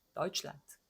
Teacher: 에오로 읽지 않고 오이로 읽는다